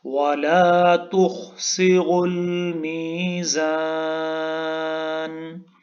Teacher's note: وَأَقِيمُوا الْوَزْنَ بِالْقِسْطِ وَلَا ولا تخسروا الميزان ولا تخسروا خا यहाँ पे पुर पढ़ा जाएगा, थिक साउंड में पढ़ा जाएगा, और रॉ भी पुर पढ़ा जाएगा, मोटा पढ़ा जाएगा, और रॉ को हम मिलाएंगे अलमीजान के लाम के साथ.